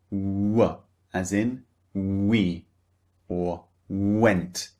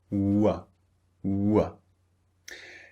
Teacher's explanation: they start very very rounded and then they become relaxed which means neutral